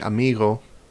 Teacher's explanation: When a single G appears in the middle of a word, which basically means between 2 vowels or between an R and a vowel or an L and a vowel or something like that, it'll either be pronounced ra, which is a fricative, like the Dutch word root, or Spanish amigo